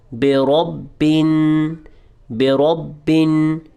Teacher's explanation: را کو با سے جوائنٹ کیا ہے تو سختی سے ملانا ہے اور اس کے ساتھ تھوڑا سا ٹھہر جانا ہے